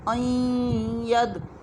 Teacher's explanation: ہم نے غنّے کے ساتھ کرنا ہوگا. نون کا کچھ حصہ بھی باقی رہے گا اور ادغام بھی ہوگا